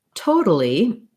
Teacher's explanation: in the word totally we have first syllable stress